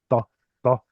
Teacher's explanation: It wasn't just a T sound, it was more like a guttural kind of emphatic T sound